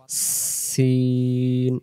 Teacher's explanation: এরপরে আমরা আসি সিন অক্ষর, সা অক্ষর নরম আওয়াজে পড়তে হবে। সিন অক্ষর সির সির ও পাতলা আওয়াজে